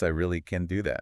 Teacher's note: When a speaker stresses the affirmative can, the vowel is noticeably lengthened.